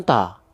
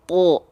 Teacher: Atau misalnya huruf to. Huruf to ketika fathah kan dia dibacanya bukan ta, tapi to. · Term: huruf tebal